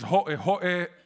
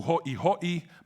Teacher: There is ho'e ho'e as opposed to ho'i ho'i, but both of them are pronounced as hoi hoi, so you lose this minimal pair of the original because of American English, because in American English there is no distinction if you want to say ho'e ho'e and ho'i ho'i.